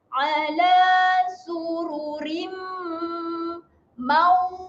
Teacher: Adanya tanda bacaan dengung sebanyak 2 harakat. Dengung yang macam mana? Kena rapatkan juga bibir lah. Sebab dia berjumpa dengan huruf mim, huruf bibir.